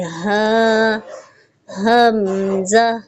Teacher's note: حمزہ کی آواز سینے کی جانب سے آنی چاہیے.